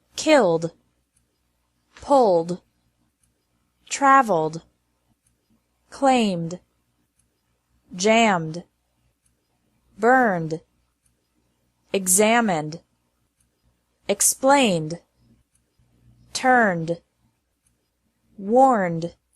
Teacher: Ed is pronounced like D after verbs ending in an L, M, or N sound.